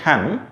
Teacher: when we pronounce sound h as in hen, see, we can find that the air is moving very fast or freely without any obstruction. So when air is moving freely, we call it as actually a glottal sound.